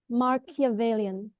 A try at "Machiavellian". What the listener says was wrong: You keep doing Mar. It's Machiavellian. Machiavellian.